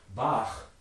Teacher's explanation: that final sound is a velar fricative in german